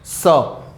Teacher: તમારું જે મોઢાનું જે આખું જે જડબું છે ને એ એકદમ ઓછું ખુલે, પણ હવા છે ને બહુ જોરદાર ઘસાઈ ઘસાઈને બહાર આવે. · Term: સંઘર્ષી વ્યંજન